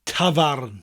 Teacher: tafarn, with that lovely rolling R, tafarn, in Welsh.